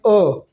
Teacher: विवृत का मतलब उससे ज्यादा खुले जैसे हम आ बोल रहे अ तो यह थोड़ा सा खुल जाता है इसलिए इसको अर्ध विवृत बोला जाता है